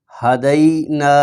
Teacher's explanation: تو پھر پڑھیے قومہ، آگے ہا زبر ہا، دال یا زبر دئی، ہدئی، نون الف زبر نا، ہدینا، یہاں پر یا لین بھی ہے اور آگے الف مدہ بھی ہے، یا لین کو لمبا نہیں کریں گے اور الف مدہ کو لمبا کریں گے